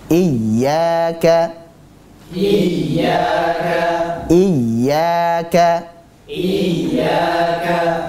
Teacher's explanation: Pada ya 2 harakat saja, mad tabi'i.